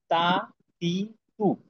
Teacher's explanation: জিহ্বার আগা সামনের উপরের দুই দাঁতের গোড়ার সঙ্গে লাগাইয়া